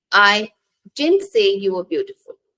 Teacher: So the stress is on didn't here, indicating that the speaker did not say something. · In the second sentence, the stress is on beautiful, indicating that the speaker did not say that the person was beautiful specifically.